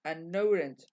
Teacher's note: Haciendo la liaison entre la n y la o.